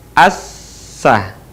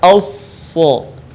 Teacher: ketika kita melafalkan huruf shad, maka posisi lidah kita atau lisan kita, bagian pangkalnya terangkat, sementara bagian depan pun kemudian menutupi langit-langit